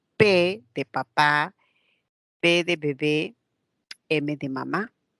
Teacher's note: Cuando son bilabiales, labio inferior se acerca al labio superior y ahí se produce un sonido